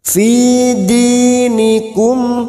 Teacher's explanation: Mim sukun dibaca jelas tanpa mendengung. Mim sukun mendengung hanya bertemu dengan 2 huruf, yaitu huruf ba dan huruf mim. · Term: idhar safawi